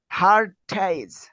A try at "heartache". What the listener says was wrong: হার্ট এইক এইচ না হার্ট এইক হার্ট এইক বলেন ব্যথা হেড এইক এটা হলো হার্ট এইক হ্যাঁ ব্যথা হার্ট এইক হেড এইক